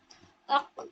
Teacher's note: ऑफ की अदायगी में ऊपर जो जुबान की जड़े ऊपर के नर्म तालू को सिर्फ टच करेगी